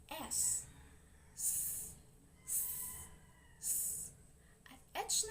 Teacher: ang hanging lumalabas ay nagdaraan sa makipot na pagitan ng dila at ng ngala-ngala o kaya ng mga babagtingang pantinig kagaya ng s at h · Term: pasuso